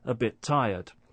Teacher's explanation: Also, another form of linking is when one word ends in a consonant sound and the next begins with a consonant sound, and when that happens, we don't hear two separate consonant sounds. We just hear one.